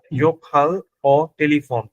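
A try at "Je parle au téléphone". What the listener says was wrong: ভালো, এটা হচ্ছে জোফাল ও টেলিফোন।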